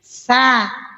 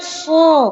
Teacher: Keluarnya suara meletup akibat dari terangkatnya pangkal lisan, menandakan bahwa dia huruf yang tebal. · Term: istihla